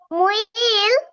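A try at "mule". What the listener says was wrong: মুই না, মিউল মিউল।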